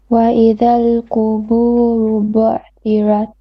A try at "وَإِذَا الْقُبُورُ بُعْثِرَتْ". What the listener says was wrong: Not bu'. If you say bu', you are almost making like a hamza with a sukun. So it's bu'thirat. So you have to kind of let the ayn kind of flow out a little bit.